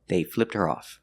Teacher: Now we hear the T because with her, the H is silent.